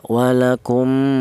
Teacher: Ghunah itu artinya ada suara berdengung. Adapun panjangnya dengung yaitu dua harakat atau dua ketukan